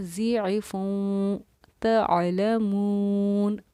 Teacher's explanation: عین کو حلق سے ظاہر کرنا ہے، آواز ایک دم کلیئر ہونی چاہیے